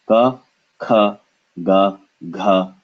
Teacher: it starts in the back of the mouth with the tongue pressing the back of the mouth